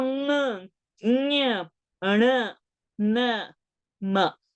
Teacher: the sound from the kanthya or the talu or the murdhani or the danta or the oshtha also comes out from the nose